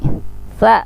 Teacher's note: Sa ujung lidah dengan ujung gigi atas tipis.